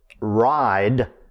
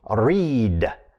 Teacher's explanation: the verb ride that we say now with the diphthong was pronounced by chaucer reed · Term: great vowel shift